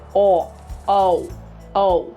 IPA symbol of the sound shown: ou